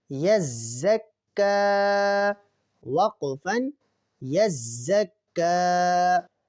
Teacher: تو کاف کو ہم ایک الف کے برابر کھینچ کر پڑھیں گے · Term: کھڑا زبر